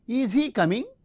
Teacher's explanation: since it is a polarity question or yes no type question we use the rising tone we can say is he coming so the verb is in